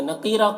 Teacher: قاف کو پر پڑھیں گے اور یہاں پر یا مدہ ہے اور را کو یہاں پر پر پڑھیں گے اور وقف کی صورت میں ایک زبر کے ساتھ الف کو پڑھنا ہے.